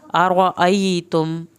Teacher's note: क़ुल अरअयतुम, क़ाफ को पुर करके पढ़ना है, अरअयतुम, रा को पुर करना है, अरअय या साकिन को खींचे